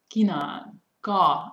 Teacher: kina, ka, it's unaspirated